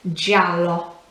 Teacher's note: you can probably hear that it's quick at the start and then elongated towards the end